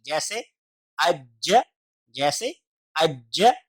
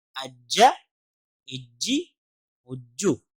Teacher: شد کی صورت میں اس کی آواز ریپیٹ ہوگی، یعنی کہ جیم کی آواز 2 دفعہ آئے گی